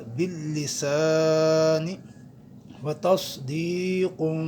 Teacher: ہم سین اور صاد کا فرق کرتے ہوئے صاد کو پر پڑھیں گے۔ وتصدیق، یا مدہ ہے، اس ہم ایک الف کی مقدار کھینچیں گے۔